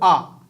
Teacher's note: पूरा खुल गया ना मुंह, आ खुल गया ना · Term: विवृत